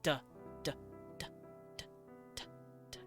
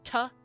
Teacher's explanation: The D is the voiced version of a T. So tuh, duh, same exact sound.